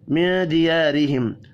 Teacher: الف مدہ کو ایک الف کے برابر کھینچ کر پڑھنا ہے. را زیر کی وجہ سے باریک پڑھیں گے. میم ساکن کے بعد تا ہے، اظہار شفی ہوگا، غنہ نہیں ہوگا. · نون ساکن کے بعد دال ہے، اخفاء حقیقی ہوگا